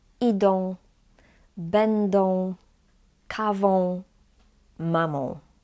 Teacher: We pronounced A with a tail as on at the end of the word. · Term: nasal vowels